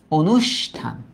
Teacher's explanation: অটা ও অর্থাৎ সংবৃত রূপে উচ্চারিত হবে